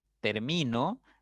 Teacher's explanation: la mayor intensidad está en mi en la sílaba del medio